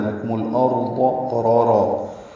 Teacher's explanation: لکم الارض، لام کاف باریک ہے، میم کو لام سے ملا دیں گے، اظہار قمری ہوگا، را اور ضاد دونوں پر ہیں، لکم الارض قرارا، قاف را پر ہیں، قاف پر ہے، حروف مستعلیہ میں سے ہے، را پر زبر آنے کی وجہ سے را پر ہے، را الف مدہ بھی ہے، یہ 2 حرکات لمبا ہے۔